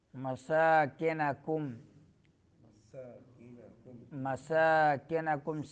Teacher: سین کو سیٹی نکالنی ہے اور لمبا کرنا ہے